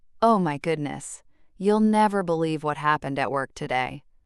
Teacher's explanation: Notice how the voice rises with eager energy. · Oh my goodness shows surprise. You'll never believe builds anticipation, and the rising tone on today leaves the story hanging.